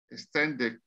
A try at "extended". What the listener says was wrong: Aquí suena como una I de extended.